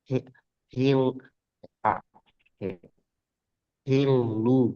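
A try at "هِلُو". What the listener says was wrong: Ah, bukan hil. Bukan L Indonesia. Hil. Tepi lidah ke langit-langit depan. Dan sekedar nyentuh, jangan diteken.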